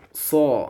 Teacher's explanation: pangkal lidahnya di diangkat ya seperti itu pangkal tu bagian terakhirlah dari ujung lidah terakhir yang ke dalam itu ya mau ke tenggorokannya itu ya dapat dipahami nggih seperti itu. Jadi terangkat tengah lidah ya ke langit-langit mulut